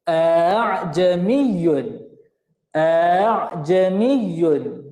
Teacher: kita membunyikan huruf hamzah antara hamzah dengan huruf alif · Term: bacaan tashil